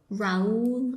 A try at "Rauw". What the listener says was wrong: That's not Raul. There's no L there. It's Rauw